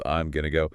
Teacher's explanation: The am contracts to I'm and going to reduces to gonna.